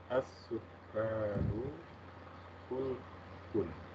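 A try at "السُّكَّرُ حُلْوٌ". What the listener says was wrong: Nah, as-sukkaru, kafnya pendek ya, boleh diulang. As-sukkaru.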